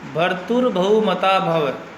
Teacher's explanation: म में अ रस्व स्वर है इसलिए लघु, ता में आ दीर्घ स्वर है इसलिए गुरु, भव भ में अ रस्व स्वर होने के कारण लघु का चिन्ह लगा।